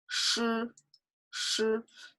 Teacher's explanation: You will find that automatically somehow your tongue retreats to your throat a bit. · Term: round the lips